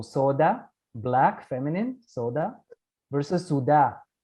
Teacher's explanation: final a is shortened in the Muslim dialect